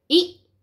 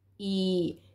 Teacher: इ की जो साउंड है वो छोटी है मतलब कि बहुत ही कम टाइम लेती है ठीक है और बड़े ई की मात्रा जो है थोड़ा टाइम लेती है बोलने में